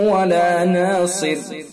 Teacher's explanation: صاد کو پر اور را کو باریک، اور اگر ہم وصل کریں گے تو تنوین کے بعد پھر یہ آگے واو ہے تو لہذا ادغام ناقص بالغنہ ہوگا، وصل اگر پڑھیں گے کریں گے، اگر وقف کریں گے تو پھر ادغام نہیں ہوگا۔